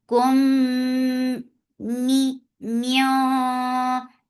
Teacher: Keep the sound in your nose for a longer time because this has akmal gunna in it.